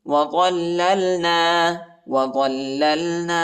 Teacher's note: ضا کو لام کے ساتھ ملائیں گے اور لام کو دوسرے لام کے ساتھ ملائیں گے، ضا کو موٹا پڑھیں گے